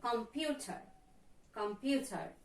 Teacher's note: We can find stress in the second syllable.